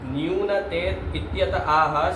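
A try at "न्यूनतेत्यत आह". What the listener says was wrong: ये क्या न्यूनते? न्यूनते बोल रहे हो, फिर इत्यत भी अलग निकाल रहे हो। न्यूनता इत्यत आह, पढ़ो फिर से।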